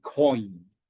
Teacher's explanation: So we call these as opposed to simple complex vowel sounds because these vowel sounds begin as one vowel and then transition and glide into another · it starts off as an O and glides into an E, and we put those two things together.